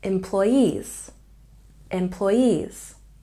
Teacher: we have a little stress on the first syllable with the main stress on the last syllable